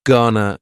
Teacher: Gonna is generally pronounced with the schwa.